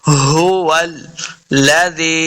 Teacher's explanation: ہا کو سینہ کی طرف سے ادا کریں گے، اس کا مخرج صحیح تبھی ادا ہوتا ہے جب ہم اس کو حلق کے نچلے والے حصے سے ادا کریں گے